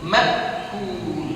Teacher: Ini hamzah jangan kita tukar dengan ain.